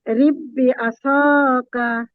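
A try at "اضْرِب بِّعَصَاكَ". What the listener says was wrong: এখানে হামজার মধ্যে জেড দিয়ে বলেন আপু। এখানে এই যে আলিফটা আছে, দদের আগে যে আলিফটা আছে, আলিফের মধ্যে জেড দিয়ে পড়েন, তাহলে হামজা হয়ে যাবে, তখন উচ্চারণটা ঠিক মতো করা যাবে। ইদরিব বিআসাকা।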